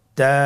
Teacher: তা হরফটি বারিক হরফ এবং এক আলিফ টেনে পড়তে হবে।